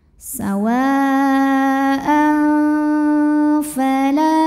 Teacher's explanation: Maka tanwinnya dibunyikan samar-samar, siap-siap untuk mengucapkan huruf fa ya, disertai bunyi dengungan. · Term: ikhfa